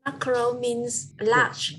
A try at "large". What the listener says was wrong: Okay, so remember the RGE, you got to pronounce it. Don't say large, okay? Large, okay? So it's RGE, so large.